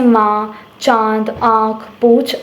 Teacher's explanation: जिन वर्णों का उच्चारण करते समय वायु नाक तथा मुंह से दोनों से बाहर निकलती है उसको हम अनुनासिक कहते हैं।